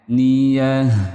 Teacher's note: bagian akhir ini ti berubah jadi huruf ha nanti pengucapannya. Niyah, seperti itu, ada ha-nya. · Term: ha sukun